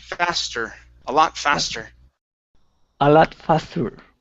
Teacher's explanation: you had rolled the r on faster